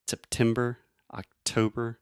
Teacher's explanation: I'm really aspirating which means I'm breathing air out of my mouth and went making that pop sound September October think about the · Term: true T